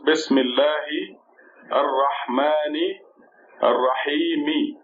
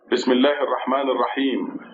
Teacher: But if you stop, you don't have to say Mi. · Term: sukoon